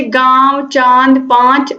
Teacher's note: तो यहाँ पर आपको याद रखना है कि अनुस्वार जो होते हैं उनका उच्चारण केवल नाक से होता है, लेकिन जो अनुनासिक होते हैं उनका उच्चारण करते समय हवा मुख और नाक दोनों से निकलती है